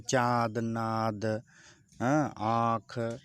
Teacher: इसके उच्चारण में समय हवा नाक तथा मुख दोनों के दबाव के साथ बाहर निकलती है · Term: अनुनासिक